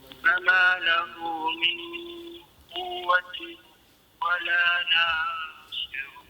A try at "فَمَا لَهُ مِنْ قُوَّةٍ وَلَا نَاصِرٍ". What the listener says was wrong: La tu dua harakat saja.